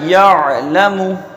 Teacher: عین پر جزم ہے تو عین پر جزم ہی رہے، عین پر زبر نہ ہو جائے